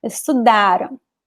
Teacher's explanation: The end is very weak. The am sound is very weak because it's not important, it's not stressed.